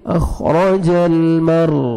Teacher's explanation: را کو پر کریں گے کیونکہ را ساکن ہے اس سے پہلے فتح ہے